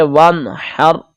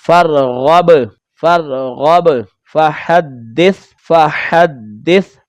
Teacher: یہ جو آخری حرف ہے یہ غیر قلقلہ ہے، اس لیے آواز یہاں پر لوٹ کر نہیں آئی